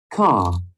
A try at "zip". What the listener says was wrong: Zip. Okay, the Z, not C. Z, zip. The buzzing sounds must be felt through your throat.